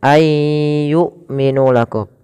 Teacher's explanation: Ayyu'minu lakum, dan tidak diseret untuk huruf hamzah. Hamzah bukan huruf yang diseret misal ayyu'minu yu, tapi dia harus sempurna hamzahnya yu a i, karena hamzah memiliki sifat, salah satunya adalah sifat syiddah dan jahar. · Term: hamzah sukun